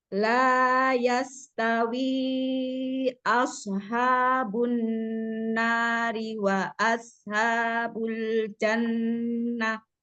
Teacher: Lamnya dua harakat aja cukup, jangan kepanjangan.